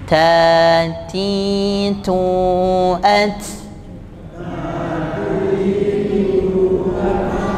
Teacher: Ta ketika dia sukun nanti bunyinya tetap mengalir. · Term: hamas